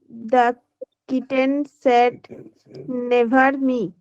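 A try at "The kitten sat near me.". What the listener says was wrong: Near. near. Yes, never is not the right answer. Near.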